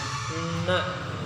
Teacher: Makharijul huruf dari huruf na yaitu ujung lidah bertemu bawah sedikit makhraj la dari arah gusi gigi atas. Sifat yang dimiliki oleh huruf na yaitu jahar, kemudian ada bainiyah, kemudian ada istifal, ada infitah, izlaq, dan juga gunnah, berdengung.